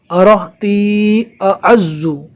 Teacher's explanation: الف کو نارمل اور عین کو حلق سے ادا کرنا ہے